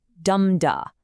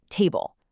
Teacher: Listen to the heavy, energetic drop of the trochee, where the stress hits first and the unstressed syllable follows. Dum-da, like the word table.